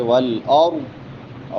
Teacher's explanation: را موٹی ضاد موٹا